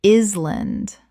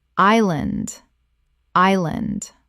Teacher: The S is completely silent. Two syllables.